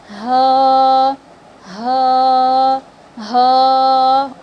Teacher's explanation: تو حلق کے جو نیچے والا حصہ ہے وہاں سے ہ ادا ہوگی، ہ ہ، جو سینے کی طرف کا جہاں سے ہمارا گردن اسٹارٹ ہوتا ہے وہیں سے ہ ادا ہوگی، ٹھیک ہے، ہ ہ ہ۔ · حلق کے سب سے نیچے والے حصے سے ہ ادا ہوتی ہے